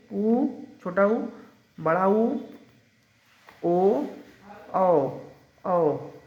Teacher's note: जिन ध्वनियों का उच्चारण करते समय ओठ गोलाकार हो जाता है, गोल हो जाता है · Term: वृत्त मुखी